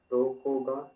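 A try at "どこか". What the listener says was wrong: ಗ ಅಲ್ಲ ಕ ದೊಕೋಕ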